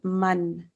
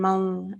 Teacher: we pronounce the noon because it's followed by a kha in this case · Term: clear man